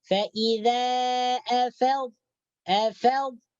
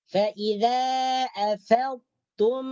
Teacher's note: Jadi di sini huruf yang mati yang pertama ini dimasukkan ke dalam huruf yang kedua yaitu ta